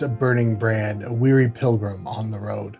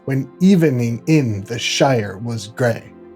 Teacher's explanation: iambic tetrameter stress on the second syllable and four metrical feet in a line